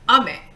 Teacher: Ame, going down high to low is rain.